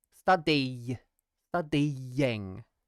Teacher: it's a y sound y but that y again is really just the end of this vowel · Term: Glide